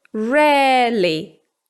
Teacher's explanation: So you hear people say 'bear' instead of 'bear', 'fair' instead of 'fair', or 'rare' instead of 'rare'. It's basically the same /e/ sound as in the word 'pet', but just long. Now, we just add the 'ly' and we end up with 'rarely'. · the diphthong /eə/ is usually transformed into a long /e/. · In non-rhotic accents, like British or Australian English, we basically pronounce a long /e/ sound.